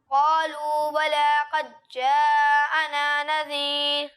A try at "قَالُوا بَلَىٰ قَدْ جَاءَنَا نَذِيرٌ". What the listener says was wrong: اچھی کوشش ہے لیکن آپ یہاں دال میں کلکلا نہیں کر رہے ٹھیک ہے قد جاءنا ٹھیک ہے اور مدات کی مقدار بھی پوری کرنے کی کوشش کریں اچھی کوشش ہے لیکن مزید بہتری کی کوشش جاری رکھیں فَكَذَّبْنَا وَقُلْنَا مَا نَزَّلَ اللَّهُ مِن شَيْءٍ